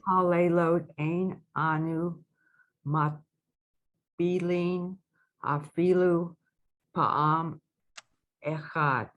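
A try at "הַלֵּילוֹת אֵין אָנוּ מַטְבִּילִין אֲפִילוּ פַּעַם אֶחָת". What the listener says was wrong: Nice.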